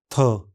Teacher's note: इस ध्वनि के उच्चारण में स्वर रज्जु कंपन नहीं करते। कोमल तालु ऊपर उठकर नासिका मार्ग को बंद कर देते हैं।